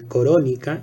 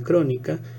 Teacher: la epéntesis de la O, o sea, una epéntesis vocálica en corónica en lugar de crónica